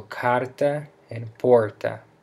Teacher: In the words porta, porta, or carta, which means door and letter that follow, you can use your belly to push air out of your mouth as you say the H. It's a breathy H, not a guttural sound